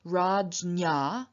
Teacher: the dental n turns into a palatal n after the palatal stop